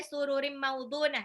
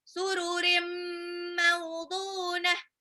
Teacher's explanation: Sururim, tanwin ketemu mim, idgham bi gunnah lagi, tahan. Nggak boleh sururim maudunah ya, tapi sururim maudunah, ditahan.